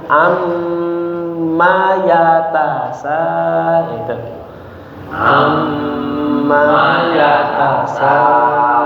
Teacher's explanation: Amma yatasaalun. Ya, amnya didengungkan. Manya pendek, langsung disambung.